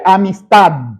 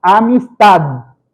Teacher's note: Es un sonidito gutural prácticamente porque la D es sonora.